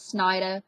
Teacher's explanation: we drop the ERs at the end of our words